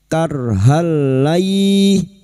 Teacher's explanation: Karhal, fathah tanwin huruf h yang berharakat fathah tanwin bertemu lam idgham bila guna, masuk tanpa mendengung, masuk pada huruf lam tanpa mendengung, tanpa ditahan lama-lama